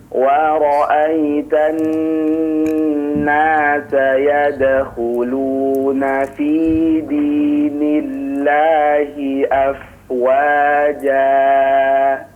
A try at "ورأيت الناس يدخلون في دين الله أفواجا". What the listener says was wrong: Kepanjangan afwan. Afwaja, 2 harakat saja ya.